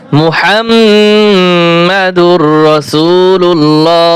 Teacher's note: এইখানেও লাম মোটা হবে এবং শেষে হা উচ্চারণ করবেন